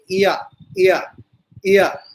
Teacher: अर्धस्वर मतलब स्वर जैसी स्थिति रहती है, इसमें कहीं भी अवरोध नहीं होता